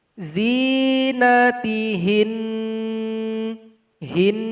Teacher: kita sukunkan huruf nun dan kita kasih bunyi dengungan selama 2 harokat atau 2 ketukan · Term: nun yang bertasydid